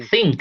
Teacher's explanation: So it's a TH, but voiceless. So it's the TH like in.